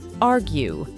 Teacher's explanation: The verb is stressed on the first syllable. Argue. To produce the American R, remember to curl the tip of your tongue and pull it back a bit while keeping the tongue tense.